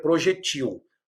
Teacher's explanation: a lembrando que projete o também a palavra de dupla prosódia podemos falar e escrever projetil aí ela se torna oxítona